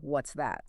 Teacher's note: Go ahead and try saying that with a genuinely curious rising tone